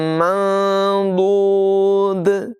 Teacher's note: ضاد کی آواز پر ہوتی ہے، دال کی آواز باریک ہوتی ہے۔ دونوں جگہوں میں یہاں پر بھی دال ساکن ہوگی، یہاں پر بھی دال ساکن ہوگی، دونوں جگہوں میں قلقلہ بھی کریں گے۔